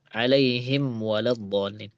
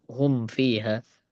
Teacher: peringatan ya dari nazim kepada pembaca itu untuk tidak mengikhfakan mim sukun itu ketika bertemu waw atau bertemu fa. Jadi peringatan, jangan sampai diikhfakan.